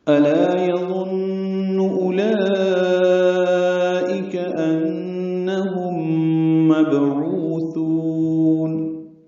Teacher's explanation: حمزہ اقصى حلق سے بالجہر ادا کریں گے. لا الف متحد و حرکات لمبا ہے، لام باریک پڑھیں گے، الف مدہ بھی باریک ہے.